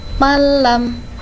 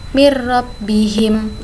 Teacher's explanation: huruf lam dan ro ini dibaca tanpa mendengung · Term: idgham bila gunnah